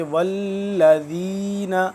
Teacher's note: یخادعون اللہ والذین، دیکھیں تشدید ہے، اس کو ہم تھوڑا سا جما کے پڑھ دیں گے۔ والذین، ذال کو نرمی کے ساتھ دو دانتوں کے درمیان زبان کی نوک کو ذرا باہر کی جانب نکالیں گے